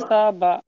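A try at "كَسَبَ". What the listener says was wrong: কাসাটা সিনটা টানা হয়েছে, কাসাবা এরকম বলছেন। কাসাবা, তাড়াতাড়ি। কাসাবা।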